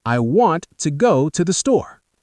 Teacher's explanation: The small words like to and the become very soft and quick. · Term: rhythm